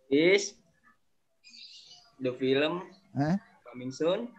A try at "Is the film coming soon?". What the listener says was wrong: Tapi nada jangan begitu kita bacanya. satu tarikan nafas. Is the film coming soon?